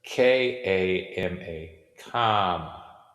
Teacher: intentionally laying phonological stress upon the ah sound